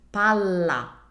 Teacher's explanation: first one is Pala more relaxed the second one is Pala I emphasize it more and I keep the l sound for longer that's how I make a double consonant